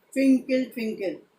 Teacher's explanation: At twinkle, twinkle, we utter loudly. Twinkle, twinkle. Star, we utter slowly.